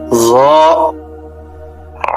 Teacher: জিহ্বার আগা উপরের দাঁতের আগায় লাগবে, নরম হবে, মোটা হবে।